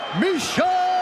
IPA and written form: ˈmiːʃə (Miesha)